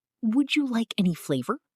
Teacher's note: When we say would you, the words blend together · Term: would you blend